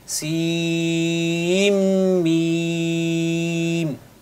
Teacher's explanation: یہاں پہ نون ساکن ہے، اس کے بعد میم آ رہا ہے، تو آپ یہاں پہ نون کو میم میں ضم کر سکتے ہیں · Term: ادغام